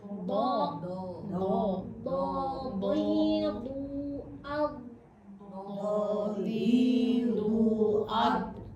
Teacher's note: d itu sama kayak qof apa tebal. Jadi suaranya terkepung di dalam.